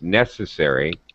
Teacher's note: make sure you hit first syllable stress it's necessary all right higher pitch on the first syllable but